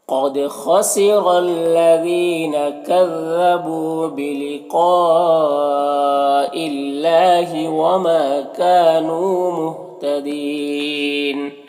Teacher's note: یہاں پر قاف حروف مستعلیہ میں سے پر پڑھیں گے اور یہ جو مد ہے مد متصل ہے تو اسے 3 سے 4 الف کے برابر کھینچ کر پڑھیں گے. یہاں پر اللہ کے لام سے پہلے حمزہ کے نیچے زیر ہے تو اللہ کے لام کو باریک پڑھیں گے، کھڑا زبر ہے، 1 الف کے برابر کھینچیں گے. · یہاں پر ما میں الف مدہ ہے، کاف میں الف مدہ ہے، نون میں واو مدہ ہے، یہ تینوں کو 1 الف کے برابر کھینچیں گے. یہاں پر وقف کی صورت میں مد عارض وقفی ہوگا